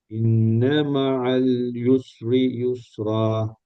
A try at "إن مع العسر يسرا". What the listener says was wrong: யுஸ்ரி யுஸ்ரா இல்ல பிரதர், அது ஆயின். உஸ்ரி. إن مع العسر يسرا.